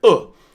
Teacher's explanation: It's just an angry tone. Every time we use the fourth tone we stamp down. We put our feet down.